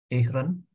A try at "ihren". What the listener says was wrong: While, Z, dan H di tengah jangan dibaca. Bukan ihren, tapi iren. Seolah-olah panjang. Ya, iren.